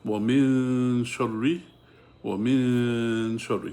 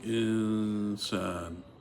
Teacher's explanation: So you hide the pronunciation of noon because there's a sheen after it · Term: ikhfa